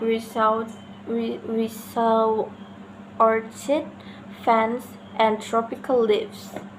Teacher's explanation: rising intonation is used when the idea continues